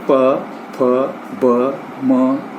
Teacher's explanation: ओष्ठ ध्वनियाँ, ये जो है ध्वनियों के उच्चारण में निचला ओष्ठ ऊपर के ओष्ठ से स्पर्श कर वायु को अवरुद्ध करता है